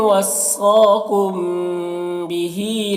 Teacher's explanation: मीम साकिन के बाद बा है तो इख़फ़ा शफ़वी होगा, गुन्ना और इख़फ़ा के साथ में पढ़ेंगे।